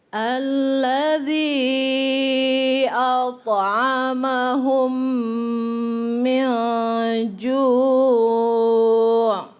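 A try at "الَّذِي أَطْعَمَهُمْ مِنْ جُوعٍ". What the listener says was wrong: Ya, boleh ditambah lagi dengungnya sedikit sini. Min ju'.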